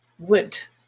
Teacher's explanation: it's short it's quick and the tongue is just a little bit more relaxed a little bit lower